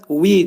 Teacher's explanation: vav hərfini, demək, vəv hərfini tələffüz edərkən dodaq qönçələnir